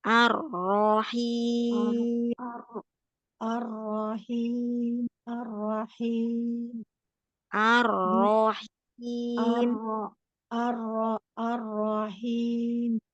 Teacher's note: Arrahimnya ro yang keduanya ditebalin lagi.